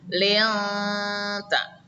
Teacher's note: Di sini ada nun mati bertemu dengan ta, adalah hukum bacaan ikhfa. Artinya samar, maka nun matinya dibaca samar.